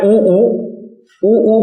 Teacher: जैसे ऊ करेंगे तो होठ गोल ही हो जाएंगे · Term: व्रतमुखी